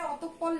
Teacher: একইভাবে এখানে অতঃপর লেখা আছে, এখানেও আমাদের এই বিসর্গ উঠে গিয়ে পয়ের কিন্তু ডাবল উচ্চারণ হবে